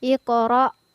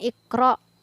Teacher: ada huruf qaf yang bersukun di tengah ayat maka cara penyebutannya adalah dengan dipantulkan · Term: Qalqalah